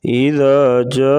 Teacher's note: الف کے اوپر جو مد ہے یہ مد ہے 3 سے 4 الف کے برابر. اس مد کو لمبا کیا جاتا ہے. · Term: مد متصل